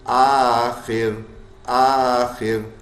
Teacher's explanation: آخر آخر، آ الف مدہ ہے، خا موٹا کرنے والا حرف ہے. را ساکن ہو گیا، زیر کے وجہ سے ساکن ہو رہا ہے تو باریک ہوگا